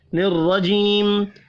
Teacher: الرجیم، را زبر کی وجہ سے پر پڑھا جائے گا، جی یا مدہ ہے، ایک الف کے برابر کھینچ کر پڑھیں گے، وف کی صورت میں میم ساکن پڑھا جائے گا۔